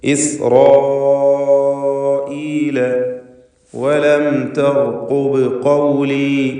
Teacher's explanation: സാക്കിനത്തായ മീമിന് ഇൽഹാർ ഷഫവി നൽകി മണിക്കാതെ വെളിവാക്കണം